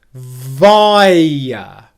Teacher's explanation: All we very simply do is transition from the 'I' to a schwa sound. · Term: triphthong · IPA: /ˈvaɪə/